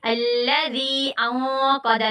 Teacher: دیکھیں نون ساکنہ پہ نون ساکنہ کے فوراً بعد بڑی کاف آ گیا تو یہاں پہ ہم لوگ اخفا کریں گے. الذی انقض نون ساکنہ کے فوراً بعد قاف آ گیا, موٹا اخفا ہوگا